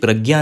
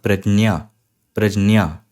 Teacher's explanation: थोड़ा सा ज और ज्यादा ञ